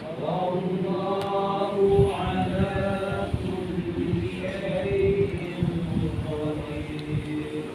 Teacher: Ra nipis ya, qadir. Jangan tebalkan qadir.